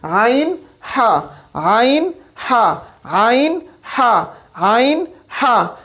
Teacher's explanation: जब आप प्रैक्टिस करेंगे तो इंशाअल्लाह आपको महसूस होगा कि ये दोनों हरूफ हलक के दरमियानी हिस्से से अदा हो रहे हैं, हलक के दरमियानी हिस्से से। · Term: वस्त हलक